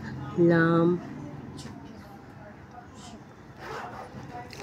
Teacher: ज़बान की नोक इब्तिदाई तालू से लगाकर अदा होता है लाम